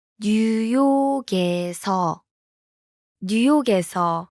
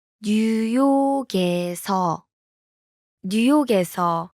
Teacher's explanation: The last consonant in 뉴욕, blends with the vowel in. 에서.